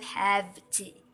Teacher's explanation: Assimilation of voice is illustrated by the pronunciation of have to with an F sound rather than the V sound